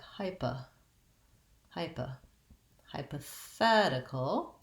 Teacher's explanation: instead of a pah for this po i have a schwa here pa so it sounds like hyper hyper hypothetical my length and